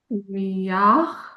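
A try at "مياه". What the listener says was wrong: You see it's not it is more from the throat.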